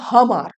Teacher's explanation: যেমন শব্দটা আমার, কিন্তু এতে শব্দের গোড়ায় স্ট্রেস দেওয়ার জন্য বা ঝোঁক দেওয়ার জন্য সেটা হয়ে দাঁড়াচ্ছে হামার, অর্থাৎ আ ধ্বনি হয়ে যাচ্ছে হ ধ্বনিতে, হামার। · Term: হ ধ্বনির আগম